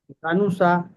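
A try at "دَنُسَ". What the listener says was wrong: দানুসা। হ্যাঁ, সিনটা আরেকটু সিটি করতে হবে, সিন জবর সা, দানুসা।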